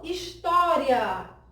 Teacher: Observem que o I, quando a gente pronuncia história, o I ele é bem mais fraquinho, a gente pronuncia de maneira bem mais fraquinha do que o A. Portanto, o A é a vogal dessa palavra e nesse encontro aqui, por se encontrarem vogal mais semivogal, eu tenho o caso de ditongo.